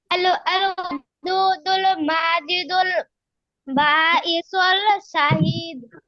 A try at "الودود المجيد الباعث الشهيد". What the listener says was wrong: আল ওয়াদুদুল মাজিদুল বাঈসুশ শাহীদ। ইসুল না, বাঈসুশ শাহীদ।